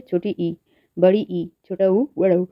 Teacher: जब समृद्ध स्वरों का उच्चारण किया जाता है तो जिह्वा का अग्रभाग अधिक ऊंचाई पर होता है, जिससे मुख प्रायः बंद रहता है, ये समृद्ध स्वर कहलाते हैं।